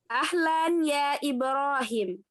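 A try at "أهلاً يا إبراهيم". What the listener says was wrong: Ibrahim itu kan ada ya-nya ya di belakang sebelum mim itu ada ya-nya. Jadi bacanya harus Ibrahim gitu ya. Ahlan ya Ibrahim gitu.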